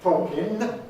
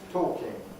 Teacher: the ing ending, ing, is pronounced with an alveolar nasal, talking, rather than a velar nasal, talking. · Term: G-dropping